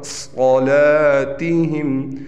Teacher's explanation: सौद मोटा पढ़ा जाएगा, लाम मोटा नहीं पढ़ा जाएगा